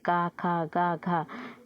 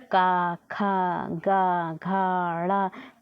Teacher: ये जो का वर्ग होता है वो कंठ से बोला जाता है